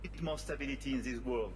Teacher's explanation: So from nothing we insert a y sound in this context. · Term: insertion